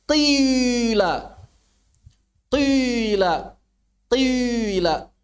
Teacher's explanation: Nah, cara baca yang dijelaskan oleh Alamah At-Tibi di sini artinya cara baca syuyu', ismam syuyu', ismam yang mengiringi. Jadi si ismamnya itu di belakang kasroh. Kasroh dulu baru ismam. Bukan memisahkannya, tapi diiringi.